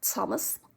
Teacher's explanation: What's happening with the Liverpudlian T, Thomas, is in fact that it is mixed with an S.